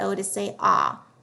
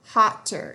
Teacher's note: need to make sure there's two consonants between the two vowels so that we don't have a long vowel sound we want that o to say ah hotter so we needed to double the T before we add